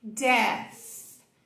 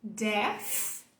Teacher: em vez de colocar o som do TH, você substituir ele por um som de F